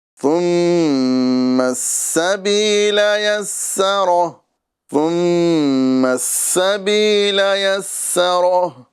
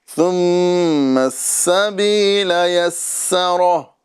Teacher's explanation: اور سبیلا اور یسرا کے اندر سین ہے، یہ سیٹی کے ساتھ ادا کیا جائے گا